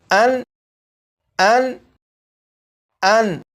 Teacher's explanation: جب آپ نے پڑھا ان تو نون پر پہنچ کر زبان کا کنارہ دانتوں کی جڑوں سے جس جگہ پر لگا وہی نون کا مخرج ہے، اور اسی جگہ سے نون کو ادا کریں گے۔